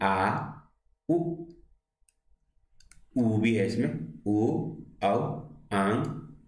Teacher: जीभ के जो पीछे का भाग है वो ऊपर उठता है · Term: पश्च स्वर